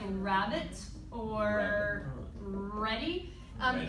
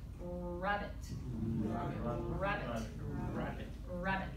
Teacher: when it's at the beginning, you really use your lips too in that round shape to kind of like emphasize it.